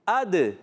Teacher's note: آگے آ رہا ہے دال، حمزہ کو ملائیں گے دال سے، دال کو ہلانا دال کو ہلانا ہے، دال کو ہلائیں گے، کیوں؟ دال حرف قلقلہ میں سے ہے اس لیے آواز لوٹ کر آئے گی اور ہل جائے گا